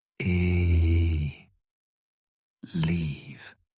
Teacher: The long e leave is a tense sound. You have to smile. Stretch your lips back.